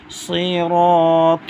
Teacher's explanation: سین باریک ہوتی ہے، صاد موٹا پڑھتے ہیں